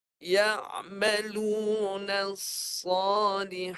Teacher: Desiran nafas. Tapi tebal. Pangkal lidah tinggi, tengah lidah tinggi, bagi tebal.